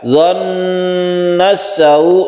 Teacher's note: Dhannas sawu ini tasydid nun gunnah musyaddada, kita tahan di sini. Dhannas sawu, sawu ini adalah mat lain, apabila terus ini 1 alif saja.